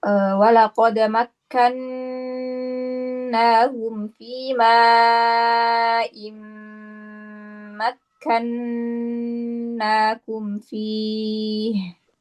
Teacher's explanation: Coba kak, nun tasdidnya lebih lama ya